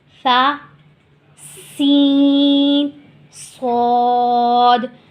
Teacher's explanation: فا ہم نے نرمی سے ادا کیا، اس میں بالکل بھی سختی اور سیٹی نہیں آئی۔